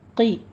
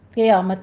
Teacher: قی پر پڑھا جائے گا لیکن آواز باریک رہے گی، قی، یا قیامت نہیں کہنا ہے، ٹھیک ہے، قیامت نہیں کہنا۔